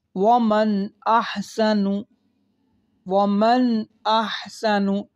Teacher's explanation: اگر آپ غور کریں، نون ساکن کے بعد حمزہ آ گیا ہے، یہاں پر اظہار ہوگا، یعنی گنہ نہیں کریں گے